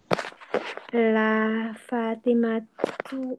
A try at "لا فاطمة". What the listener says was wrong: Lamnya pendek kan, jangan dibaca panjang.